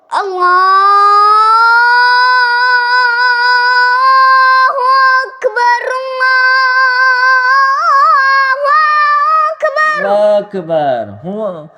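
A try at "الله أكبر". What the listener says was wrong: ہوا اکبر دینا ہے، واہ اکبر کرتے ہو آپ. ہوا اکبر، ہوا اکبر نہیں، ہوا اکبر، ہوا اکبر، ہوا اکبر کھینچنا ہے. ہاں وا اکبر نہیں، اس طرح ہونٹ نہیں کرنے. ہوا اکبر، وا اس طرح ہونٹ بالکل بند کر دو.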